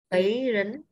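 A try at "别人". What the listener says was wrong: Bía nhé, đừng đọc bế. Bía rấn. Bía rấn.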